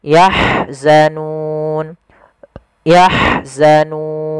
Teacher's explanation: ha alirkan, dia punya sifat rohawa, aliran nafas dan hamas.